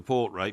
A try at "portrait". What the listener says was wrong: Portrait? Portrait? Portrait? It's got a T in it. You said portrait.